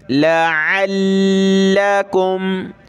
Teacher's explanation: लाम को तशदीद की वजह से सख्त करेंगे, आइन को गले से निकालेंगे।